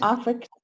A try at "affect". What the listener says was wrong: Affect. See, your mouth is like you want to say ah, and your mouth does not move at all, but you say eh.